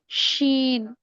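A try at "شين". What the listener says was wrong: शीन, थोड़ा सा और खींचिए, लाम तो ठीक है,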